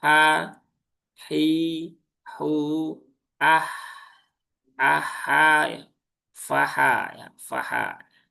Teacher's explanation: Ha dia di sini ya tengah tenggorokan sama dengan huruf ain dan dia lebih lembut ya.